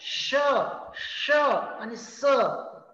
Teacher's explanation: काही एक जागा शिल्लक राहिल्यामुळे हवा घासून बाहेर पडलेली आहे म्हणजे हवेला अडवायचं काम जिभेन केलं पण तरीसुद्धा काही बारीक एक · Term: घर्षक